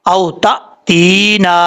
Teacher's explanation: حمزہ زبر واو او، تا زبر حمزہ تا، او تا، تا زیر یا، تی، نون زبر الف نا، او تا تینا. یا مدہ ایک الف کی مقدار لمبا کر کے پڑھیں گے. یہاں پہ حمزہ جھٹکے کے ساتھ پڑھا جائے گا، تا تی، اس طریقے سے.